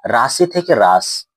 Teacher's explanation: শব্দের আদি অক্ষরে শ্বাসাঘাত করলে কখনো কখনো শব্দের অন্ত বা শেষ স্বরটি লোপ পেয়ে যায় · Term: অন্ত স্বরলোপ